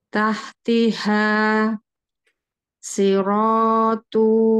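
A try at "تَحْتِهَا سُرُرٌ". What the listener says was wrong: Nah, ro-nya kepanjangan, hati-hati. Tu-nya juga kepanjangan. Siratu.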